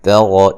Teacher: تا کو بریک، را کو موٹا